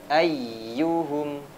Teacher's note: huruf ya ketika bertasydid ditekan lebih tinggi suaranya